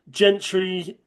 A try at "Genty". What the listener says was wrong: Genty, there's no R.